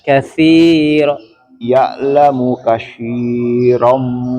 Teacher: ya ujung lidah kita nempel gigi atas